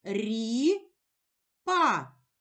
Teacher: у слові ріпа два склади визначимо наголошений склад покличемо слово ріпа наголошений перший склад рі наголошений голосний і